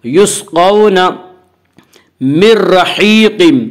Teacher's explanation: لام اور را میں ادغام بلا غنہ ہوگا۔ یہاں نون ساکن کے بعد را ہے اس لیے یہاں پہ ادغام بلا غنہ ہوگا